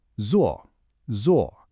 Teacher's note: it's got that strong falling fourth tone